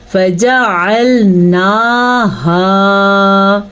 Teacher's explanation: हा के बाद अलिफ मद्दा है तो हमने इसे भी खींच के पढ़ा